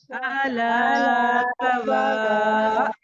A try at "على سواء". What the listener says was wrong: नहीं कहना, सवा नहीं है, ये रॉन्ग है।